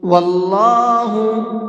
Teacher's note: یہاں پر اللہ کے لام کو منہ بھر کے پڑھیں گے، پر کر کے پڑھیں گے، اس لیے کہ یہاں پر اللہ کے لام سے پہلے زبر ہے، اور اللہ کے لام سے پہلے زبر ہوتا ہے تو اللہ کے لام کو پر کر کے پڑھتے ہیں۔